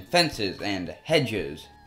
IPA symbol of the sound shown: iz